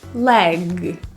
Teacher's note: The G in leg is voiced, so you should feel a vibration in your throat.